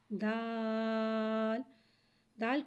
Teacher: دال حرف نطیہ ہے، زبان کی نوک اور اوپر کے دانتوں کی جڑ سے ادا ہوتا ہے۔